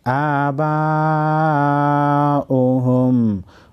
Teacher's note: बड़ी मद को 5 अलिफ की मकदार खींचेंगे